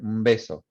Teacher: It becomes a bilabial nasal right there.